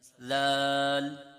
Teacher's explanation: ذال کا آپ نے یہ خیال کرنا ہے کہ ذال میں زا کی آواز نہ نکلے، کیونکہ زا سختی کے ساتھ اور ذال نرمی کے ساتھ